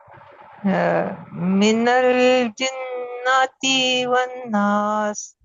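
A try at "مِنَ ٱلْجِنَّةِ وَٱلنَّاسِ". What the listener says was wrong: ती को आपने खच दिया लंबा कर दिया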